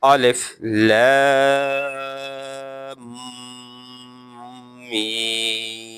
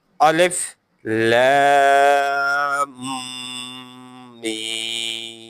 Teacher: Because Madda sign is over Lam. And then I also long the meme sound, while there is also madda on meme, but shad is also on meme. So nasal sound is produced, which is called gunna.